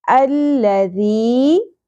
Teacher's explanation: Okay, دین حمزہ زبر لام ساکن، اگین تشدید ہے. ذال نرمی سے ادا ہوگا، سیٹی کی آواز نہیں آنی چاہیے اور شدت بھی نہیں ہونی چاہیے